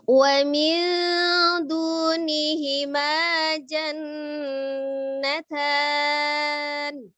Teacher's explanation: karena ini adalah huruf Dal maka ketika kita mengucapkan Doni sukunnya makhrojnya sudah mendekati huruf Dal jadi ujung lidahnya sudah ada di Pangkal gigi seri atas ya jadi kemudian cara membacanya dengan ditahan disertai dengan hunah jadi IPA juga termasuk hukum yang mengandung hunah atau dengung jadi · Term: ikhfa